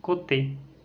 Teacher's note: C'est une voyelle postérieure mi-fermée, arrondie et orale.